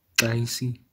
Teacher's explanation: Remember, that's a nasal vowel, so it's an ah.